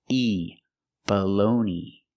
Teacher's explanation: And the G is silent. And the last syllable is E. It's the long E like green bean.